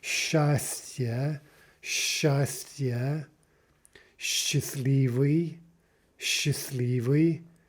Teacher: As, for example, let's take the combination we mentioned the other day, S, ch. That's pronounced like sh, right? That double length consonant.